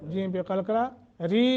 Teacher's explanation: ری حروف مدہ ہے، 1 الف کے برابر لمبا کرنا ہے